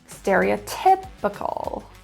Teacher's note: Magical. The stress is in the fourth syllable.